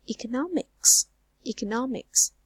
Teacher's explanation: with 4 syllables, the stress fall on the 3rd syllable